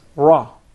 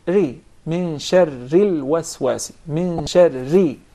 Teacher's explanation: Sometimes it will be pronounced very clearly, and sometimes the same letter will be pronounced with tafkhim, very heavy and deep, such as the ra with fatha, for instance, and sometimes the same letter will be pronounced with tarqiq, very soft and thin, such as if we pronounce the ra with kasra.